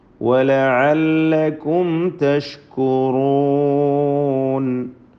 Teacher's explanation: സാക്കിനായ മീമിനെ ഇൽഹാർ ഷഫവി നൽകി മണിക്കാതെ വെളിവാക്കണം. റാഇന് തഫ്ഖീം കൊടുത്ത് അതിൻ്റെ ദീർഘം മദ് ആരിദ് സുകൂൻ നൽകിക്കൊണ്ട് വഖഫ് ചെയ്യുക.